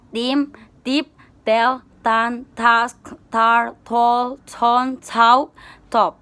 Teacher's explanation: Voiceless alveolar stop sound